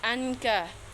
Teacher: ikhfa hakiki karena nun sukun bertemu kaf. Cara membacanya samar-samar dan berdengung 2 atau 3 harokat.